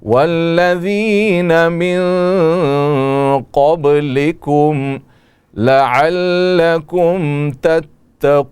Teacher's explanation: دونوں میم میں اظہار ہوگا، اس میں غنہ نہیں ہوگا.